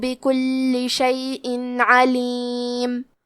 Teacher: حرف اللام پہ تشدید ہے تو ہم 2 حرف کے برابر لام کو پڑھیں گے